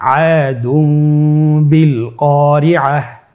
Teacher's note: তাহলে আমরা যেটি করব যে তানবিনকে মিম দ্বারা পরিবর্তন করে গুণার সহিত পড়ব।